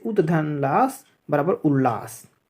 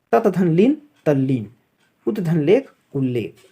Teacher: त के बाद यदि ल हो तो त का ल में परिवर्तन हो जाता है